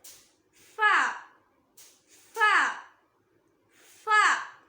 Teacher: இது மேல் பற்களோட ஓரம் கீழ் உதட்டோட இன்சைட டச் பண்ணணும்.